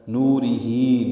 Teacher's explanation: نو واو مدہ ہے، را باریک ہے، ہی مد صلہ ہے، دو حرکات لمبا ہے